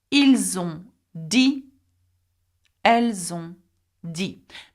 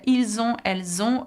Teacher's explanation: Now notice the z sound, ils ont, elles ont, okay, that's purely because il and elle have an S and on begins with a vowel. We call it a liaison.